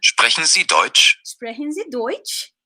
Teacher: Oxirgi kelganda intonatsiya ko'rasizmi, baribir ko'tarilyapti.